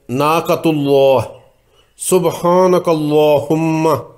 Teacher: اس کی دوسری مثالیں ناقۃ اللہ، سبحانک اللہم، دونوں مثالوں میں اللہ کے اسم جلالہ سے پہلے پیش اور زبر ہے، اس لیے یہاں تفخیم ہوگی، لام موٹا ہوگا